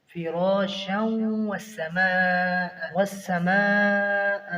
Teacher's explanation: فراشا والسماء، یہاں پر بھی یرملون ہو رہا ہے، حروف یرملون میں سے قاعدہ ہے ادغام کا، ادغام مع الغنہ۔ فراشا والسماء میں مد متصل ہے، اس کی ادائیگی 5 الف ہوگی، زیادہ سے زیادہ اسے کھینچ کر پڑھنا ہوگا۔